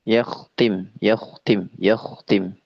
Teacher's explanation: kha-nya tebal, ta-nya tipis, yakhtim